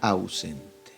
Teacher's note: tenemos dos vocales juntas se pronuncia en una sola emisión de voz tenemos la vocal abierta a y la vocal cerrada u También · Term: diptongo, dictongo